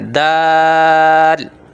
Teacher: اس کو ذرا کھینچ کے پڑھتے ہیں، 3 سے 5 الف کی مقدار لمبا کر کے پڑھتے ہیں